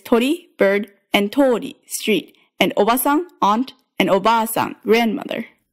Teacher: you're going to double the length of the vowel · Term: long vowels